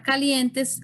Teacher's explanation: en la palabra calientes el mayor esfuerzo de voz va a ser en lien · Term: penúltima sílaba